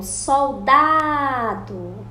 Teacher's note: A penúltima sílaba é a sílaba forte que está no meio da palavra, igual soldado.